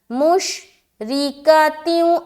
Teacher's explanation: را کو باریک رکھیں گے کیونکہ اس کے نیچے زیر ہے